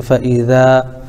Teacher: الف سے پہلے ذال کے اوپر زبر ہے اس لیے الف مدہ ہوگا، ان کو تھوڑا کھینچ کر پڑھیں